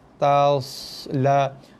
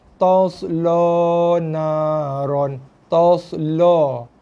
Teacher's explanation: Ta jadi to, la jadi lo. Sebab terikut dengan so ni tebal.